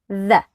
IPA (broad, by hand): ð